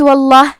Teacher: یہاں حرف اللام کا حکم ہے تفخیم، تو ہمیں حرف اللام کو موٹی آواز میں پڑھنا ہے۔